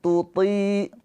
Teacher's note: samarnya itu lidahnya mendekat ke huruf ta. Tapi jangan ditempelin. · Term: ikhfa hakiki